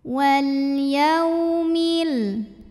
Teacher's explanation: Billahi wal ada alif lam qamariyah karena alif lam menghadapi huruf qamariyah yaitu ya, maka lam sukun dibaca jelas. Wal yaw ada huruf lin karena ada waw sukun didahului fathah, maka dilembutkan.